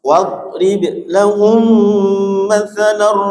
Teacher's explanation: Wadrib, dotnya bukan qalqalah, ba-nya qalqalah.